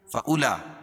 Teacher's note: حروف مدہ کے بعد حمزہ اسی کلمے میں تو مد متصل ہوتا ہے، اس میں طول ہے، یعنی 3 سے 5 الف کے برابر اس کو کھینچ کے پڑھیں گے